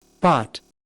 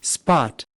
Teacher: 앞서 보았던 단어 pot에서는 바람이 많이 나왔지만 P 소리가 S 소리 다음에 나타날 때는 바람이 생기지 않습니다. 즉, pot의 P와 지금 들었던 spot의 P는 음성적으로 다르지만 우리는 같은 소리로 인지합니다. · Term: 바람이 없는 P